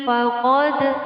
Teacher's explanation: Bil imani faqad, faqad di sini terdapat hukum bacaan qalqalah Qalqalah sugha atau qalqalah kecil pada huruf dal sukun